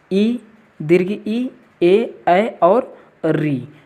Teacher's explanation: जिन स्वरों का उच्चारण करते समय जिह्वा का अगला भाग सक्रिय रहता है उसे अग्र स्वर कहते हैं